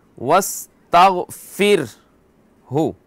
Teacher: را ساکن ہے، اس سے پہلے کیا ہے؟ کسرہ، تو اس کو باریک پڑھیں گے. واستغفر ہو، فر ہو.